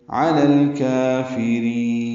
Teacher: 2 حرکات لمبا کرنا ہے، باریک پڑھنا ہے، فا کو جلدی اور معروف پڑھنا ہے۔ را کو لمبا کریں گے، وقفاً مد عارض السکون بنائیں گے، را باریک پڑھیں گے